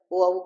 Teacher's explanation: ओ औ किसे बोले जाते हैं, कंठ और होठ से बोले जाते हैं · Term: कंठोष्ठ